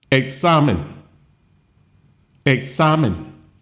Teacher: it ends in an N. Stress falls on the second and to the last syllable.